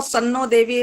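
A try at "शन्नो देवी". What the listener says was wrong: सन्नो देवी। और देखो, अभी तुमने जो बोल दिया, मैं इसी का नंबर काट के दंड लगा दूंगा। सन्नो देवी बोला तुमने? हाँ, अगर स बोल दिया तो दंड मिल जाएगा, सोच लो।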